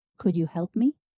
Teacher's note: Feel how your voice naturally rises at the end. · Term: Rising intonation